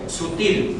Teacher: En sutil, ¿cuál de ellas lleva más fuerza, más énfasis? En la sílaba til.